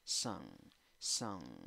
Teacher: 4 letras, 3 sonidos. Se escribe con U, pero la pronunciación es con schwa. Ni A, ni E, ni O. · pero no es con N al final, es con N más G, es una fusión, son. Entonces el sonido nasal se alarga. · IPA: \ ˈsəŋ \